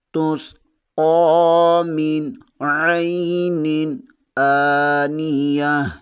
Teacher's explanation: میم زیر کو نون کے ساتھ ملائیں گے، نون ساکن کے بعد عین آ رہا ہے، یہاں بھی غنہ نہیں اظہار ہوگا۔ عین زبر کے آگے یائے ساکن ہے، یہاں پر عین لین ہوگا۔ · قاف کے اوپر کھڑی زبر ہے، اسے 1 الف کے برابر کھینچ کر پڑھیں گے۔